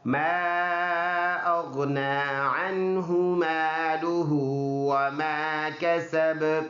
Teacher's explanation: last word با ہے، با کے اوپر زبر ہے، اور با ان حروف میں سے ہے جو حروف قلقلہ ہے، یعنی اس پہ آواز مڑ کے دوبارہ آئے گی